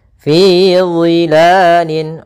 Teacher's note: Fi dhilalin, Allah makhrajnya yaitu daripada ujung lidah kita menempel dengan gigi seri atas dan dia pangkal lidah terangkat, sehingga huruf dha ini huruf yang tebal